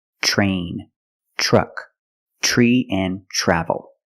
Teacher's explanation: we pronounce it ch ch plus the r sound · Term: CH sound